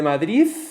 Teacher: el sonido dental oclusivo sonoro, D, se vuelve interdental fricativo sordo, como la Z, oclusivo dental sonoro, como la T, o se pierde por completo.